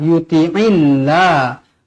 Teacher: lafzul jalalah dibaca nipis kerana sebelumnya berbaris bawah. Jangan baca yuti'illah, yuti'illah, salah, yuti'illah.